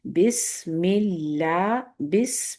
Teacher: بس پہ آپ نے صفیر کو واضح رکھنا ہے، سین کی